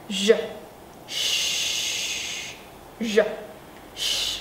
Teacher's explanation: Các bạn nhớ cái âm thanh của cái từ đó một khi các bạn nói đúng. Cong cái lưỡi lên giống như chữ s của chim sẻ nè. Cổ rung bật âm thanh nè.